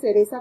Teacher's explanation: los hispanohablantes no decimos la palabra cereza con C, sino que decimos cereza con S, aunque la escritura es con C. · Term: ceseo